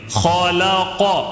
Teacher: خا کو تھوڑا موٹا پڑھنا ہے، لام کو باریک پڑھنا ہے، قاف کو بھی تھوڑا سا موٹا پڑھیں گے